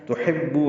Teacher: ان تحبو اخفا پہلے بتا چکا ہوں. تحبو حا وسط حلق سے ادا کریں گے، با سے ملائیں گے، بو وہ مدہ ہے.